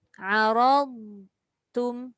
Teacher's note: Dot tak boleh bunyi qalqalah.